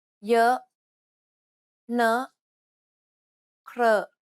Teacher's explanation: To pronounce this sound, first try to pronounce the O in boat. From there, try to unround and spread your lips.